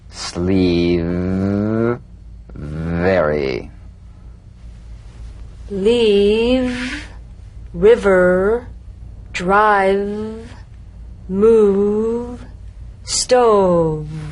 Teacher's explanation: You'll feel a gentle, dark, buzzing vibration on the lower lip. All suggestion of the F must be out of there, otherwise your V sounds like an F.